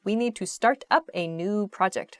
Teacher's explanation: up startup maybe you can hear the slight difference in pronunciation when I say the phrasal verb start up there's a disconnect between the words